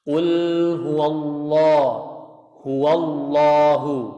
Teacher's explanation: lam yang lafzul jalalah itu harus terangkat pangkalnya, nggak boleh mencucu.